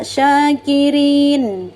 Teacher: Jadi nunnya jangan langsung diputus ya, syakirin, tapi sempurnakan sifat hurufnya, yaitu tawasud dan gunnah.